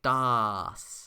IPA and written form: daːs (daß)